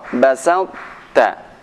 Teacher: Jadi tetap ada monyongnya pada huruf ta